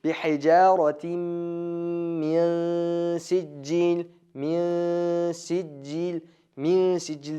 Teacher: Nunning g'unnasi sinning chiqib turgan yeriga yaqin borib o'qiladi. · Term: ixfo